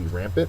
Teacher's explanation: first syllable accented